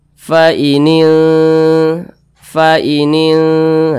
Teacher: didengungkan itu suaranya itu kita tahan kita panjangkan sejenak